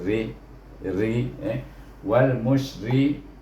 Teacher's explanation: Kemudian ra baris bawah, ri baca dengan nipis